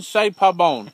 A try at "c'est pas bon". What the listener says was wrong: No, pas bon. Not bone. Not bone. Ain't no bones in here. C'est pas. Pas. No, pas. Pas.